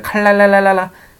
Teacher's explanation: 앞에 있는 리을의 영향을 받아서 리을이 됩니다